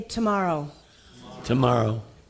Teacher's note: your tongue goes not behind your teeth but a little bit back and it is also a little bit aspirate